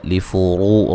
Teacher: را کو موٹا ادا کریں گے